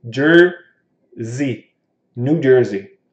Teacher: Nesse caso aqui, o S tem som de Z.